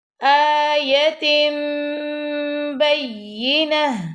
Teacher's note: تا کے نیچے 2 زیر ہیں وہ نہیں پڑی جائیں گی، ہا کی آواز آئے گی